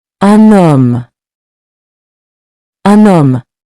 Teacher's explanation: Notice how the N carries over because the word starts with a silent H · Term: liaison